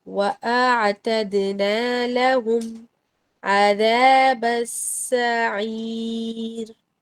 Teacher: وَأَعْتَدْنَا اس کو دیکھیے، اعتدنا میں لازم آپ نے اسمائلی فیس بنا کر لوور جو نیچے والے ہونٹوں کو پھیلانا ہے، نیچے اور پیچھے کی طرف. وَأَعْتَد دال پر قلقلہ ہو رہا ہے. وَأَعْتَدْنَا لَهُمْ عَذَابَ السَّعِيرِ.